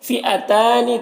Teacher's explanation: تا میں کھڑا زبر ہے، ایک الف برابر کھینچیں گے